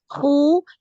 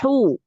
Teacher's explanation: Hnya itu jangan khu tapi hu bersih ya